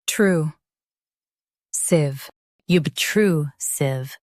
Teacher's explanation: Stress true and keep sieve soft.